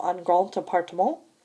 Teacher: in liaison, the D of grand is pronounced like a T